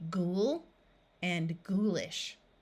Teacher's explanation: sorghum is a kind of grain in both of these words the O and U will have the long oo sound which is the ooh of the word Moon